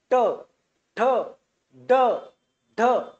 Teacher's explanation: ज्यावेळेस आपली जीभ ही फोड होते त्यावेळेस तो कोणता होतो रे तो मृदन्य होतो · हे बघा आपली जीभ आपोआप फोल्ड होते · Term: मूर्धन्य